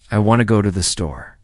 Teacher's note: The stress is on want and store. The words to and the are much softer. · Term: rhythm and stress